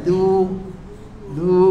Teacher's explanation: Dal nipis du. Makhraj dal ni hujung lidah belakang gigi atas. Du du du bukan du.